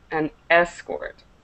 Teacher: So the stress is on the second syllable, to escort. And the noun is an escort. So the stress is on the E.